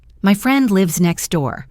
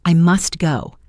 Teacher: it's quite difficult to pronounce the T clearly, so most native speakers will simply drop it, saying next door. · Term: elision